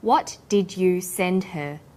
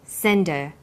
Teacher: send her send is the strong form and her is weak because her is not stressed we drop the initial hurt sound